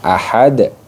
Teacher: satu Alif kemudian ahadun ahadun di sini dibaca Qalqalah Kubro jadi Dal sukunnya dipantul Ahad nah di dalnya disukunkan kemudian dipantulkan